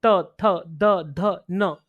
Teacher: हुआ पृष्ठ में पूरा टच होता है क जैसे त त जीवा आपकी उठेगी और दांत को पूरा टच करेगी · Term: स्पृष्ट